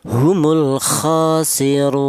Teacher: boleh dibaca tul. Artinya tul itu panjang yaitu tiga alif atau enam harakat.